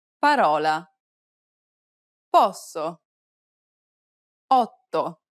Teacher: It's identical to the OU sound in the word ought. This is an open sound, so be sure to widen your mouth.